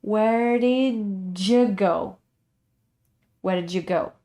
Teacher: the r sound is blended into d but it sounds like the flapping sound again · And D and U make the sound of J.